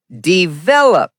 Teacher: The stress falls on the second syllable.